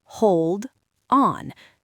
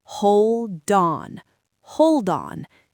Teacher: if you connect them, the D moves over to the O.